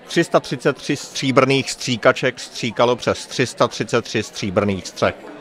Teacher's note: only the voiceless variant of the ř. All these instances are preceded by 't'